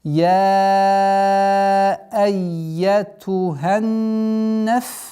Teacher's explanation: С огласовки фатха уходим на удвоенный нун и удерживаем в размере 2 огласовок назализации